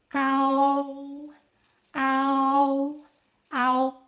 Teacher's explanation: Start with a, open your mouth wide, and then gradually glide to o.